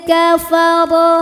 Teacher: dibunyikan secara tafkhim karena ro berharakat di atas yaitu harakat fathah maka dibunyikan dengan tebal pangkal lidah terangkat